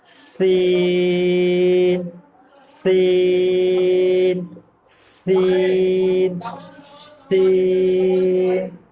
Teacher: سین میں سیٹی کی آواز آئے گی اور دانت پر دانت رکھ کے یہ حروف کی ادائیگی ہوگی